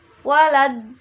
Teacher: Hukum bacaan disebut mad lazim musaqal kilmi adalah apabila mad tabi'i berhadapan dengan huruf yang bertasjid di dalam satu perkataan. Membacanya harus dipanjangkan lebih dahulu baru ditasjidkan dan panjangnya sampai 6 harokah atau 3 alif atau 3 kali panjang mad tabi'i, dengan tetap memperhatikan huruf rangkap yang ditandai dengan tasjid sudah mad.